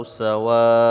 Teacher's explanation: ada mad asli bertemu dengan hamzah di dalam satu kalimat. Ini disebut dengan mad wajib muttasil, panjangnya 5 harokat.